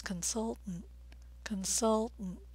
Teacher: notice I'm stressing the second syllable the vowel sound as in mustard and the T's are a